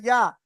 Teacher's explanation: জিভের মাঝখান ওই সাথে ওপরে তালের সঙ্গে লাগে